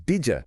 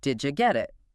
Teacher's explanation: The D sound at the end of did and the J sound, like Y at the beginning of you, often blend together to create a J sound, like in judge. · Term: Assimilation